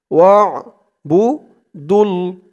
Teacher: ওয়া'বুদুল্লাহা ওয়ালা ওয়া'বু ওয়াও দিয়ে আইন ধরবে, ওয়া আইনের উচ্চারণটা গলার ভিতর থেকে শক্ত হয়ে আসবে